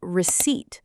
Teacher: The P is completely silent. You say it like receipt.